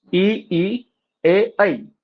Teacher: इन स्वरों के उच्चारण में जीवा म्हणजे जीभ मुंह में आगे की ओर जाती है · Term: अग्रस्वर